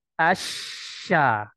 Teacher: sifat tafasyi ini adalah sifat yang hanya dimiliki oleh huruf syin ya dan keluarnya mulai dari pertengahan lidah Asya jadi Perhatikan dengan baik bahwasannya hembusan ya atau tersebarnya ee